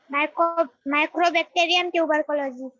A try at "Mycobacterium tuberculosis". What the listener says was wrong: Not micro, it is myco. MYCO, not CRO. Okay, MYCO, Mycobacterium tuberculosis.